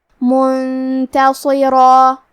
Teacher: یہاں بھی حکم ہے اخفاء، تو ہم یہ حکم کو غنہ کے ساتھ ادا کریں گے